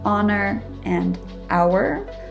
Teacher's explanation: h is often silent at the beginning of words for example the words honor and hour